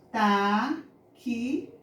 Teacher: O som do X, táxi, vai ser de S, de CS